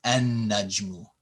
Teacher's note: when we see this in writing el najmu, you wouldn't pronounce the L. It becomes an najmu.